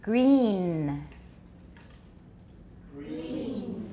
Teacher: This is a very long E. The N is just a little bit at the end.